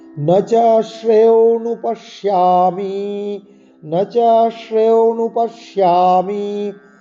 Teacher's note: এই ন চ শ্রে তালিবস্যের উচ্চারণ তালুর স্থানে লাগিয়ে করতে হবে